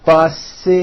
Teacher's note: The last sound you hear is that voiced Z.